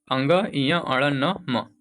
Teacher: इन सब का उच्चारण नासिका से होता है। · इन सब का उच्चारण स्थान नासिका यानी कि नाक से होता है।